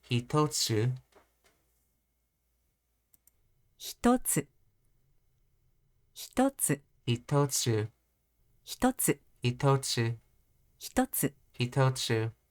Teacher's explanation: 一つ hitotsu, which is a low, high, low